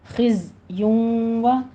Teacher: زائے کو قوی آواز کے ساتھ ادا کریں گے، سیٹی کی آواز آنی چاہیے ، خزیوں و، ادغام مع غنہ کریں گے، تنوین کا قاعدہ · ادغام مع غنہ کریں گے، تنوین کا قاعدہ 2 کاؤنٹ کرنے ہیں